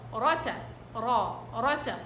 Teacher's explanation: لاحظين اني ضغطت اشي بالراء قدامنا لانها مفخمة